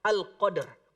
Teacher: Cara membacanya tetap diwakafkan di huruf dal, tapi harus ada sifat huruf ro-nya setengah keluar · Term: wakaf isyarah